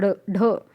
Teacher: अड़ और ढ ये क्या होते हैं, उत्क्षिप्त व्यंजन होते हैं